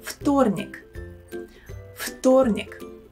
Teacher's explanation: В in this word we should pronounce as фу. Фу. Sounds much better and easier to spell, isn't it?